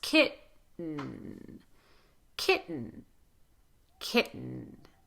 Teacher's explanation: I'm not doing a lot of vowel there. Kitten. I'm doing tons of N. And for N, your tongue is on the, again, it's on the alveolar ridge, a little further back. · I'm doing tons of N. And for N, your tongue is on the, again, it's on the alveolar ridge, a little further back. And there's some air going through your nose.